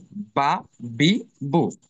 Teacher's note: দুই ঠোঁটের মধ্যস্থল থেকে, মানে যেখানে একটু ভেজা অংশ সেখান থেকে বা উচ্চারিত হবে। বা জবর বা, বাজের বি, বা পেশ বু, বা বি বু।